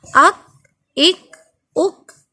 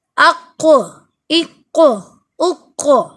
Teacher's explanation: کاف قلقلہ نہیں ہوگا اور یہ قاف قلقلہ ہوگا